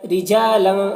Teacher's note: رجالا، را کو باریک پڑھنا ہے، اور لن میں یہاں پر اخفا ہو رہا ہے، تو تنوین کی آواز کو ناک میں چھپا کر پڑھیں گے۔